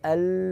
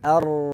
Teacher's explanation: belakang atas ya sesuai makhrojnya kalau lam ini kanan kiri lidah kalau Ra ini suaranya terpusat ke tengah